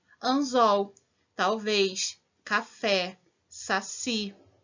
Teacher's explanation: a sílaba tônica está na última sílaba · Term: oxítonas